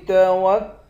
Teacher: نون کے بعد الف ہے، اس الف کو بھی ایک الف کی مقدار کھینچ کر پڑھیں گے